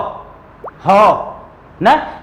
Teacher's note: इसीलिए ह को शुद्ध कंठ ध्वनि, कंठ को काकल्य भी कहते हैं, याद रखिएगा, कंठ को क्या कहते हैं, काकल्य। तो ह जो है यह शुद्ध कंठ ध्वनि या शुद्ध काकल्य ध्वनि है